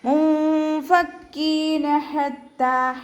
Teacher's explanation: ഹ വസത്തുൽ ഹൽക്കിൽ നിന്നാണ് വരുന്നത്, അതിൻ്റെ സൗണ്ട് ക്ലിയർ ആക്കുക. താഇൻ്റെ കൂടെ ഷദ്ദയും അലിഫ് സ്വഗൈറയും വന്നിട്ടുണ്ട്, അപ്പോൾ 2 ഹർഫുകൾ ഉച്ചരിക്കുന്ന കനം കൊടുത്തിട്ട് 2 കൗണ്ട് നീട്ടിക്കൊടുക്കുക.